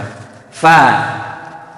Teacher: Fa berarti huruf istifa, huruf tarkik tipis, maka dibacanya sim saja, fa. Hati-hati penyakitnya huruf fa, bibirnya jangan nempel.